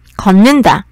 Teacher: 비음이 아닌 디귿이 비음인 니은으로 바뀌었어요. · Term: 비음화